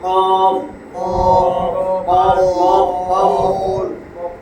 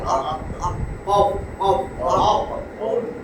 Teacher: ওই যে এরকম দেখাইছিলাম যে এটা আগা এটা গোড়া, জিহ্বার গোড়া, তার বরাবর উপরে তালুর সঙ্গে লাগাইয়া